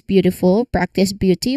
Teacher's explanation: feeling how the B smoothly connects with the Y sound